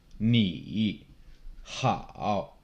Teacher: Third tone, it starts low, it drops and kind of bottoms out in your voice and then comes back up.